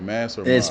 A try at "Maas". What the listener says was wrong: It looks like it should be Moss, but it's actually pronounced Mace.